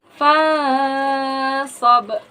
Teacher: Hukum tajwidnya ikfa karena nun mati bertemu dengan huruf ikfa yaitu shad. Cara bacanya dengung samar dan dipanjangkan sepanjang dua harakat. · Kemudian ada qalqalah kubra karena ada huruf qalqalah yaitu ba yang sukun berada di akhir kalimat. Cara bacanya memantul dengan keras.